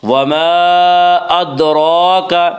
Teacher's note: را کے اوپر کھڑا زبر ہے، کھڑا زبر کو 1 الف کے برابر کھینچ کر پڑھیں گے